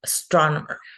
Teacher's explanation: the first syllable is just the schwa, and that the stress goes in the second syllable